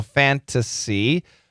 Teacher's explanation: The N can cancel the T